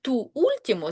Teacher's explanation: ту ультімо збереже своє звучання, тому що буква у слові ультімо наголошена, тому в жодні зв'язки не вступає.